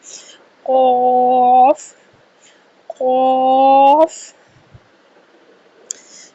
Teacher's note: قاف کا مخرج زبان کی جڑ اور تالو کے نرم حصے سے قاف کی ادائیگی کی جائے گی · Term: حروف مستعلیہ